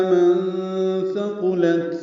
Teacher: نون ساکن کے بعد ثا آنے کی وجہ سے اخفا ہے، نون کی آواز چھپائیں گے ، ثا کو نرمی سے پڑھیں گے، قاف پر پڑھیں گے،